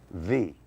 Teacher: The lower lip touches the upper teeth.